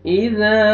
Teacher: वल्लैलि इज़ा, इज़ा ज़ाल पढ़ेंगे और अलिफ मद्दा, अलिफ से पहले ज़बर, ज़ाल को आपने खींचना भी है, जोर से नहीं पढ़ना, ज़ाल नरमी से अदा होएगा।